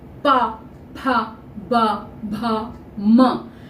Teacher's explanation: पा एकदम स्पष्ट हो रहा है कि दोनों ओंठ मिलते हैं तब हम अक्षर बोल पाते हैं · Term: ओष्ठ